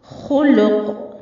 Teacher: खौ भी हुरूफ मुस्तालिया में से है और कौफ भी, तो दोनों को पुर पढ़ा जाएगा, लेकिन लाम को बारीक रखना है। खुलू नहीं पढ़ना है, लाम को पुर नहीं करना। खुलुकुन। और कौफ भी हुरूफ कलकला में से है, इसलिए थोड़ी सी हरकत देकर वक्फ करेंगे।